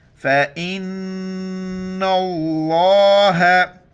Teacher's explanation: نون مشدد ہے، ناک میں آواز پیدا کرنی ہے